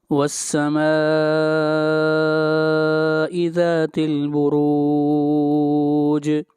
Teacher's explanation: جیم کے اوپر قلقلہ کریں گے